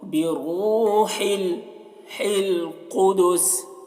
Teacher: را کو پر پڑھیں گے کیونکہ را کے اوپر پیش ہے تو را بھی پر ہوگی